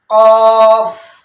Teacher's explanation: کاف باریک والا، تو وہ زبان کی جڑ اوپر کے سخت تالو کو جا کے لگتی تھی تو کاف باریک ادا ہوگا، جبکہ یہ ہے پر قوف یعنی موٹا پڑھنا تفخیم کے ساتھ · زبان کی جڑ جب اوپر کے نرم تالو سے جا کے لگے تو قوف ادا ہوتا ہے۔